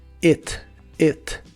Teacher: se pronuncia como una I corta y suena un poco como e